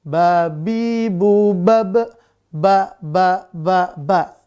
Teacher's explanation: Di mana Ba itu? Di kedua bibir. Diapakan kedua bibirnya? Dirapatkan. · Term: huruf Ba